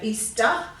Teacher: we give it a schwa sound a grunt sound at the end